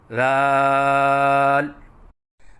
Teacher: زبان کی نوک جب اوپر والے سامنے کے دو دانتوں کی نوک سے لگے تو اس سے ذال ادا ہوتا ہے۔ جیسے کہ آپ کو اس نقشے میں نظر آ رہا ہے کہ زبان کی نوک ثنایا علیہ کے کناروں سے لگی ہوئی ہے۔ · الف کی ادائیگی منہ کے کھولنے سے ہوتی ہے، اور 3 الف کے برابر لمبا کر کے پڑھیں